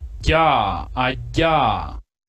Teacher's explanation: la oclusiva palatal, que es un alófono que frecuentemente no escuchamos, pero existe en español